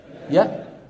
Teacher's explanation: الهمزة حرف شديد مجهور، شديد يعني لا يجري معه الصوت، مجهور يعني لا يجري معه النفس.